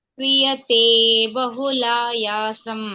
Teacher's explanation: ತೆ ದೀರ್ಘ ಇದ್ದಾಗೆ ಎಳಿಬೇಕು